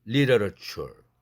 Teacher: literature 앞에 트는 플랩 되죠